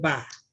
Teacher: If I say Ba, it's rising tone